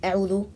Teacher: not stretching or articulating the waw